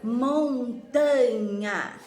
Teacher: A sílaba mais forte dessa palavra está no tá. É a penúltima sílaba. Nós contamos a última, a penúltima e a antepenúltima. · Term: sílaba tônica